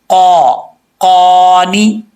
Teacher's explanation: उस कव्वे के साथ ज़ुबान की जड़ें लगेंगी और इसका जो तालु का नरम हिस्सा है उसके साथ, तो ये काफ पढ़ा जाएगा फुल माउथ, दो नुक्तों वाला।